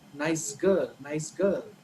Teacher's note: Nice girl, nice ends with sa, and girl, the girl starts with g. But in the connected speech, right, when you say it together, the sa becomes za. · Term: assimilation